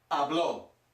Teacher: we've got an a with an accent so the emphasis is on the last syllable